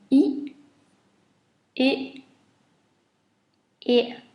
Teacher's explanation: the very, very closed one, and you should stretch your lips to your ears.